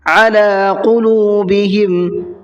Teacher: قلوبہم کے اندر بڑا قاف ہے، اس کا خیال کرنا ہے۔